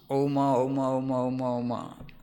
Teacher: If you remove the differences between A, U and Ma, and A merges into U merges into Ma, then a sound emerges out of these 3 letters, that is Om